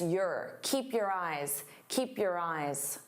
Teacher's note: Your can sound very unstressed.